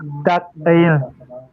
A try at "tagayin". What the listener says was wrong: Tagayin. Is it tak ayin or tagayin? Okay, just don't put a gap. Just make it be like it's in one word.